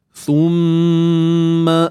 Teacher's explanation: mim bersabdu kita perlu dengungkan dengan kadar sepanjang dua harakat · Untuk a pula kita baca dengan 2 harakat, hukumnya mad badal. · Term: wajibul ghunnah